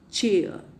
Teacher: a stricture of complete closure followed by gradual release closure of the wind is there then the wind is released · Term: affricates